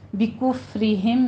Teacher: بکفرہم میں را ہماری جو ہے وہ باریک پڑی جائے گی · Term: را باریک